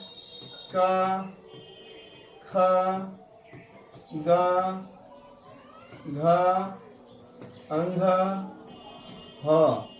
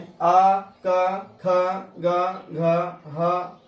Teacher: आ क ख ग घ ह और विसर्ग की उच्चारण स्थान कंठ है।